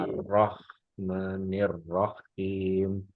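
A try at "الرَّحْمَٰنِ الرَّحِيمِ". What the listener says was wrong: Baru udah ada arahnya sedikit. Ar-Rahmanir-Rahim. Him. Ya, jadi tipis. Suaranya tipis. Cuman nanti kadang-kadang goyang lagi. Kadang masih belum begitu. Itu belum itu arahnya ada, belum begitu pas, sebetulnya kalau dibilang betul-betul di tempatnya, di makrotnya belum.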